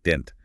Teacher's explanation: didn't has that short I sound and a softer T at the end